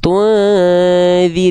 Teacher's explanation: Mim tinggal lafalkan seperti huruf m aja. Mimnya dalam kondisi sukun berarti dia mati. Enggak dibaca mamimu, tapi dibaca em aja. Bunyi konsonannya aja.